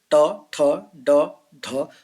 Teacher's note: इनको बोलने वक्त हमारी जीभ ऊपर छत की तरफ टच कर रही है। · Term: मूर्धा